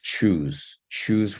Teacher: it's choose choose with the rounding of the lips